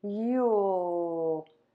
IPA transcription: jul